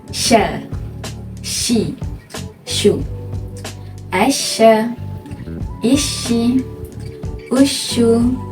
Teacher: Sekarang, mari kita menyebut huruf shin bersama-sama dan lihat akan berlaku penyebaran angin ketika menyebutkan huruf shin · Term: tafashi